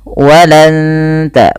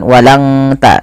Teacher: Wal yahud tapi ditahan suara nunnya dan disamarkan ke huruf ta makhraj huruf Ta ini ujung lidah menempel dengan perbatasan antara gusi atas dan Gigi atas atau gigiari atas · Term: bacaan Ikhfa, ikhfa Hakiki